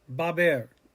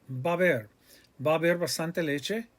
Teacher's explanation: The a and ba, the a in the middle, the h is silent, the beginning of haber with the a, it all runs together.